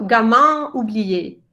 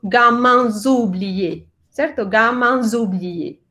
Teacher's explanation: Esa S solo suena cuando la siguiente palabra empieza con vocal · Pero como estamos cantando, lo juntamos, la S de gamin, con la O vocal inicial de oublié. Entonces decimos gamins oubliés, ¿cierto?